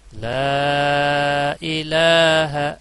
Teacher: وَأَقُولُ لَا إِلَٰهَ، لا یہاں الف مدہ اور اس کے بعد حمزہ بشکل الف تو چھوٹی مد. لا الہ لام کے اوپر کھڑا زبر اور مد اصلی ہے گویا کہ دو الف کے برابر، اس کو کھینچا جائے گا